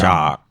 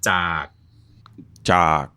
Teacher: That's why it has a low tone. Your throat's basically putting so much pressure on itself from the beginning to the end with this glottal movement.